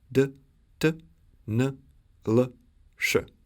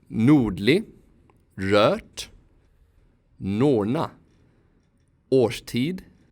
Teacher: When the R follows the letters D, T, N, L, S, the tongue is pulled back to produce retroflex sounds. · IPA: [ɖ, ʈ, ɳ, ɭ, ʂ]